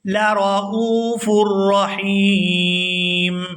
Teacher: یہاں وقف کریں گے تو وقف کی صورت میں میم جو ہے یہ ساکن ہو جائے گی